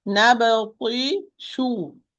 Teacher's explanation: I round the lips when I pronounce the dhamma, but I do not move it with the shin.